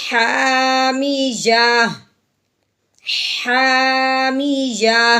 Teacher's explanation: اب یہ تا کے اوپر تنوین ہے، یہ اس کو کہتے ہیں گول تا، یعنی جس کے ساتھ ہا بھی ہو۔ اب وقف کی صورت میں جو تا ہوتا ہے اس کو ہٹا دیتے ہیں اور ہا کی آواز نکالیں گے، وہ بھی ساکن کرتے ہوئے